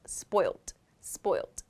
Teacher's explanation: You may also hear this word pronounced in British English and perhaps Australian English as spoilt, spoilt, with a T sound at the end